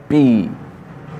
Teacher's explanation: An ejective p sound makes a distinctive pop. अब p जो है, p ये आपके दो lips हैं, ये बंद हैं, जब आप इनको press करते हैं अंदर से air आती है p, तो ये eject हो रही है air.